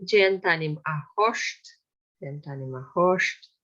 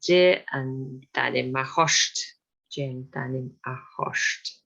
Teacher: quite often when we see R and T together in Gaelic, it's pronounced as sht.